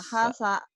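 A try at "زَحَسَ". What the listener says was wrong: Sa. Bukan sa ini. Za. Z. Terlalu rapuh kau. Zahasa. Zahasa. Za. Z. Zahasa ya. Bukan sahasa. Zahasa.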